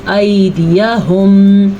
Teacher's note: واو ساکن سے پہلے زبر آ جائے جیسا کہ، اور یہ یا ساکن سے پہلے زبر آ جائے تو دونوں لین کہلاتے ہیں۔ لین نرمی سے پڑھا جاتا ہے، اسے ہم پڑھیں گے ایدیہم، کھینچ کے نہیں پڑھیں گے